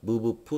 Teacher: 입술이 오므러졌다가 입술이 이렇게 뽕 하면서 터지듯이 이렇게 입술 소리죠